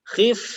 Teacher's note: Bukan di dua bibir, tapi perut bibir bawah yang dalam dengan ujung gigi seri yang atas. Jadi bibir dengan gigi, bukan dua bibir. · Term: huruf fa